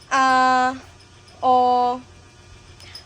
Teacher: Yung nararamdaman mo ba na parang may hinto sa lalamunan bago mo masabi yung o? Yun, glutal na hinto na yon.